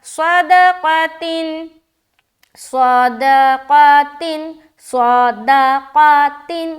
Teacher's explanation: صا موٹا، دا باریک، قا موٹا